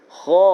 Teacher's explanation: Kha termasuk dalam salah satu huruf isti'la. Kemudian ada mat pula dengan dia, maka tebal.